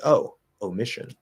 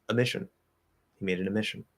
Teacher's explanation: the more common way to say the word would be to reduce that o to ah